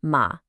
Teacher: say it with a tone that dips down and then comes back up